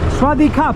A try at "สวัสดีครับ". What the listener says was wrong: You man, right? You man. You man. You say ครับ on the last word. ค่ะ สวัสดีค่ะ for the girl.